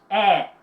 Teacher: É quando o queixo baixa e pronuncia o fonema prolongadamente. Tu tem que prolongar o som.